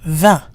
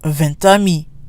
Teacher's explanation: When 20 is followed by a vowel, or what we call a mute H, we do, however, hear the T. So again, we have 20 on its own with a silent T, 20. But if we want to say 20 friends, we get 20 amis, 20 amis.